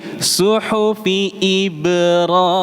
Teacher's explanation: Seolah-olah huruf ba dan rnya itu terpisah.